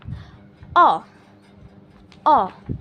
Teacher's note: Kalau O tadi itu di belakang dan agak tengah dan juga bawah. Nah, ini posisi lidahnya itu ada di tengah, naik dikit, dan penekanannya itu ada di belakang. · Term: vokal O madya atas belakang